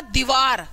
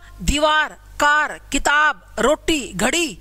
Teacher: उसके बाद है जी निर्नुनासिक। हवा केवल मुख्य रास्ते से बाहर आएगी, नाक का कोई रोल नहीं है